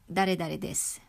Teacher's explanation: notice that the i in the she syllables become silent